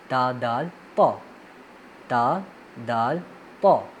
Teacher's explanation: زبان کی نوک جب آپ اوپر والے دانتوں کے جہاں دانت شروع ہوتے ہیں جڑوں کے ساتھ لگے تو ان سے یہ حروف ادا ہوتے ہیں